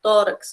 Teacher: a gente leria KS no X de tórax